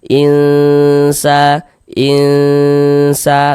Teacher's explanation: In kemudian didengungkan. Jadi di bagian innya itu suaranya itu kita tahan, kita panjangkan saja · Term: ikhfa